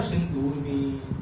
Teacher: देखो सिंधु में धा पे छोटा ऊ की मात्रा सिंधु और ऊर्मी की ऊ। तो यहाँ बड़ा ऊ पे बलाघात हो रहा है, संधि बड़ा ऊ से टूट रही है।